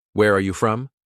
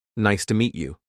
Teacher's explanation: Use a slight rise for information questions. Where are you from? Use a slight fall for statements.